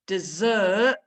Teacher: hopefully you can hear that stress on the second syllable is the dessert bit